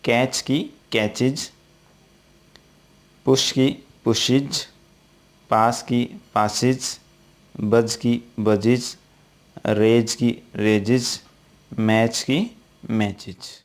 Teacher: ये सभी के सभी शब्द च, से या ज ध्वनि से समाप्त हो रहे हैं, यानी सिबिलेंट साउंड से समाप्त हो रहे हैं, जैसा कि मैंने अभी आपको बताया। तो इन शब्दों के अंत में अगर अपन ES जोड़ेंगे तो इनकी ध्वनि है वो इज निकलेगी।